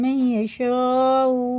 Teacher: نون نہیں پڑھا جائے گا، اس نون کی جگہ اس یا کو رکھ کے پڑھیں گے